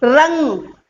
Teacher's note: तो पहले रा बोल दिया और ठीक तुरंत उसके जीभ दोबारा उठाकर और उस वायु को रोकोगे, तब आपकी आवाज निकलेगी रंग।